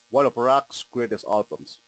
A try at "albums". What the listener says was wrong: And give me more short A. Albums.